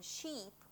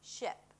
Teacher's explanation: the tense 'e' and the relaxed 'i' as in 'sheep' versus 'ship'